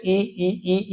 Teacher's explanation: आप बोल के भी देख सकते हो, इसको बोलो तो ई देखना आगे वाले हिस्से पे जोर पड़ेगा